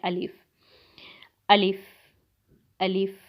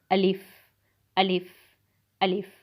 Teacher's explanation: जो अलिफ़ लफ्ज़ है, मैं इसका मखरिज आपको बताती चलूँ कि ये मुंह के खाली हिस्से से अदा होता है। तो आप इसको मुंह के खाली हिस्से से अदा करने की कोशिश करें।